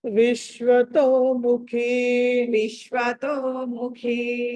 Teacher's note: అక్కడ షకారము శకుంతల షకారము, ఖ అన్నది మహాప్రాణం.